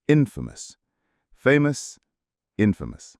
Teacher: infamous has two schwas in the second and final syllables.